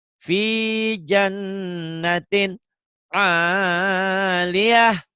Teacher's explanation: Tinnya idhar. Tinnya ketemu ain. Idhar nih.